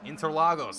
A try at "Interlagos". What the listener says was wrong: There's more syllables than that. It's Interlagos.